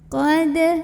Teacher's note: Cara membacanya adalah dengan dipantulkan, pantulannya kecil. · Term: qalqalah sughra